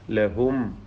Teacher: ലഹും സാക്കിന മീം ഇൽഹാർ ഷഫവി മണിക്കാതെ വെളിവാക്കുക